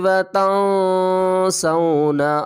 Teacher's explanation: اخفا کریں گے، نون ساکن کے بعد حروف اخفا میں سے سین آ رہا ہے